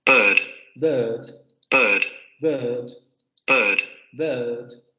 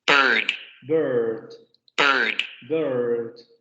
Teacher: van a encontrar las dos transcripciones también, la variante no rótica y la variante rótica